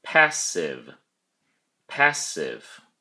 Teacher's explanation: Passive has two syllables, and the emphasis or stress is on the first syllable, pass. Don't forget to pronounce the V sound at the end of the word.